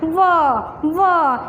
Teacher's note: देखना ऊपर का दांत होंठ नीचे पर लगेंगे, व इस तरह बोलोगे।